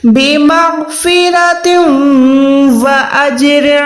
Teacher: تا 2 زیر کے بعد واو ہے، تم و، 2 زیر کے بعد واو آتا ہے تو ہم نے وہاں پر ادغام کرنا ہوتا ہے گننے والا